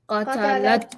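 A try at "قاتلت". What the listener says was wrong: Qatalat. If you don't make the qa part long and say qatalat, actually means she murdered. But qatalat means she fought.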